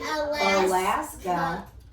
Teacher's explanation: that a at the beginning and the a at the end of alaska sounds like uh